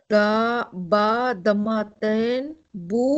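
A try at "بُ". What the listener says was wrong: No, don't say dhamma ten, no. Ba, dhamma. Ba dhamma. Not dhamma ten.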